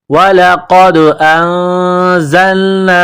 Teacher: قاف کو دال کے ساتھ پلس کرنا ہے، دال کے اوپر قلقلہ کرنا ہے، قاف کو موٹا کرنا ہے